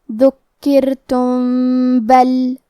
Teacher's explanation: با حروف الاخفاء الشفوی میں سے ہے، تو ہمیں میم کو چھپاتے ہوئے اور غنہ کے ساتھ یہ حکم کو ادا کرنا ہے